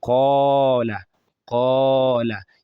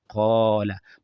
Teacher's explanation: the alif automatically takes the heavy sound of qaf. So, it has the aw sound.